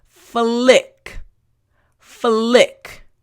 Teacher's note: front teeth bottom lip and then immediately your tongue for the L sound needs to touch the roof of your mouth